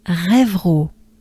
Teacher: the French R is mostly a breath. your tongue stays down in your mouth and stays put while you exhale